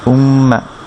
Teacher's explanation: Nasal সাউন্ডে নাকে আওয়াজ করে হবে মিমের উপর ফাতহা মা, উম্মা। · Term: গুন্না